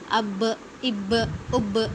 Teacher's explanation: اس کا مطلب ہے ڈبل ساؤنڈ آتی ہے۔ جب بھی ہم اس کو پڑھتے ہیں نا، قلقلہ کر کے پڑھتے ہیں نا، تو ڈبل ساؤنڈ آتی ہے، یعنی آواز باؤنس ہوتی ہے۔